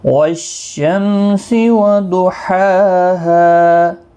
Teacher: والشمس میم پر اظہار ہوگا · ہا کو ایک الف کے برابر کھینچ کر پڑھیں گے ، اور وقف کی صورت میں بھی اس ہا کو ایک